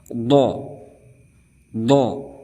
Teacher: berada di tepi lidah serta sekitar gigi geraham atas